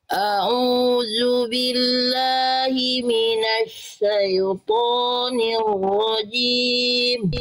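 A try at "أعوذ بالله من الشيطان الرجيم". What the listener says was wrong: Bagus Bunda, tinggal di huruf ainnya kuatkan. Au dari tengah tenggorokan Bunda. A'udzu billahi minasy syaithanir rajim.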